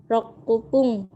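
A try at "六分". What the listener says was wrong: ku-nya hilang. Jadi ropung. Rop ya. Dia itu diamnya di P. Ropung.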